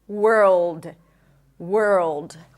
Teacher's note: An L that is produced in the back of the throat. There is a lot of tension here at the root of the tongue. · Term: dark L